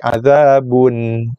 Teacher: So bila nun mati, hujung lidah sentuh gusi atas makhrajnya dan keluarkan sikit dengung, sebab nun mati ada makhraj, ada sifat ghunah secara zatnya, ada dengung.